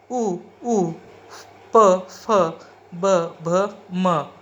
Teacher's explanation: इनका उच्चारण करते समय दोनों होठों का संबंध आता है, इसलिए यह ओष्ठ श्रेणी में आते हैं।